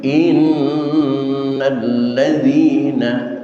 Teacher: Yang perlu diperhatikan dalam bacaan tadi di antaranya adalah in tasdid yang ada di atas huruf nun berguna hukum ghunah musyaddadah tahan selama dua harakat. Tidak cukup dengan inna tapi innalladzina ladzi dza d za remuk tapi tidak pecah.